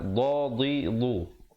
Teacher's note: makhraj dad di tepi lidah